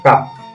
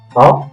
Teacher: Ti, to, ini to, ti, to, ini kaf, kaf ringan. Biasa kaf di mulut, sedangkan to ada di tenggorokan.